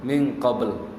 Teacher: Kalau dia qalqalah baru misek qabl. Seperti qablu, kalau di wakaf jadi qabl, min qabl. Karena ba qalqalah.